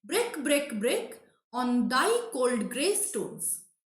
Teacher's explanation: in the first line you will see that all the three monosyllabic words are stressed